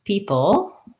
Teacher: People just has the E vowel, first syllable stress, and then pull has a P sound and then the syllabic L.